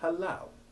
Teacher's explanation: halau usually has both syllables stressed and both have the short a1 sound